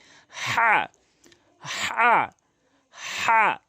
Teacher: হলকের মাঝখান থেকে বলতে হবে